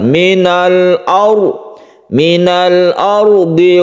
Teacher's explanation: Al bertemu dengan Hamzah kita disebut dengan izhar Qomariyah Arnya ini sukun ro ini dibaca tebal Kenapa dibaca tebal karena sebelumnya ada fathah maka roknya ini dibaca tebal Minal aw Minal ardhi wasta'marakum roknya